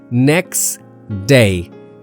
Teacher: the T in next often drops because it sits between two consonants. So it becomes next day, not next day.